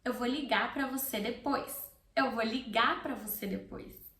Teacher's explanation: ligar has an R at the end and I don't pronounce the R. It's optional, okay, at the end of words if you want to pronounce it or not.